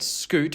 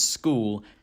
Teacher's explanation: younger Australians tend to have an allophone of the goose vowel before the letter L, which sounds more like oo. So you get scoot versus school, and goose versus ghoul.